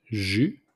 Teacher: So we don't pronounce the S at the end, it's simply jus.